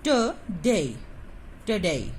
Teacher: This is the weak in sound, and this is the strong in sound. So we put the primary stress in day.